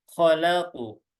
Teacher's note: Kalau qaf dia ketebal, khalaqu. Jadi bukan khalaq, tapi khalaqu.